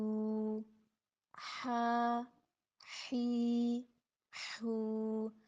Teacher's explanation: ہا کے اندر جو ہے سانس کی آواز جاری کرنی ہے، اس کو ہا نہیں بنانا۔